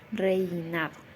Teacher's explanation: Por ejemplo, cuando digo reinado, primero estoy pronunciando la e, que es una vocal abierta, seguida de la i, que es vocal cerrada, reinado, como decrece. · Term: diptongos decrecientes